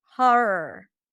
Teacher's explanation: Just think of making one long R.